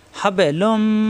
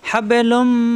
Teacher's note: তানবিনের পরে আসছে মিম, এই মিমে তাজদিদ ধরে গুণ্য করে মিলাতে হবে।